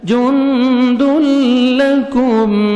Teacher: هو جند لكم، نون ساکن کے بعد دال آ رہے ہیں، حروف اخفاء میں سے آپ نے نوز میں ساؤنڈ لے کے جانا ہے. جند لکم، کاف کو باریک پڑھنا ہے، میم ساکن کا اظہار ہے، جلدی پڑھیں گے